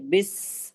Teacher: जबान की नोक को सामने के चारों दांतों के किनारे से लगाते हैं तो सीन अदा होता है। लेकिन सीन की आवाज में सीटी जैसी आवाज होती है।